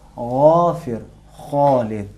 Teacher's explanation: غین کو غرارے کی صورت میں ادا کریں گے۔